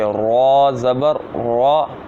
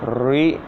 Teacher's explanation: ہم نے پیچھے ایک قاعدہ پڑھا ہے ابھی کہ را جب آئے گا، جب اس کے اوپر زبر آئے گی تو اس کو پڑ یعنی موٹا پڑھیں گے، را زبر را، لیکن جب اس کے نیچے زیر آ جائے گی را زیر ری تو اس کو باریک پڑھیں گے، ری۔ یہ دیکھیں باریک آواز آ رہی ہے، اس طرح اس کو پڑھنا ہے۔